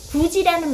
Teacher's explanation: 이 모음 앞에서 디귿이 지읒으로 바뀌거나 티귿이 치읒으로 바뀌는 현상입니다.